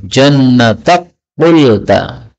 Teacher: Kafnya berubah jadi qaf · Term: idgham